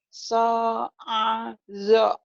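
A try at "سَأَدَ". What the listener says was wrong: So'ado. Bukan zo ya. Do bulat.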